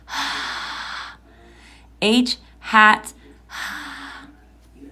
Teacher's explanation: Your voice box is also turned off for the sound. It's just air coming out of your mouth.